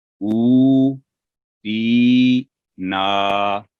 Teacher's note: تینوں آوازیں 2 سیکنڈ لمبی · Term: حروف مد